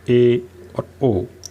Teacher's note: ए और ओ, इनमें आधा मुंह खुलेगा। जब भी आप इनका उच्चारण करोगे आपका मुख आधा खुलेगा। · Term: अर्धविवृत